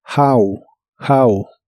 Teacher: la H se pronuncia como una J suave de español y la o como una a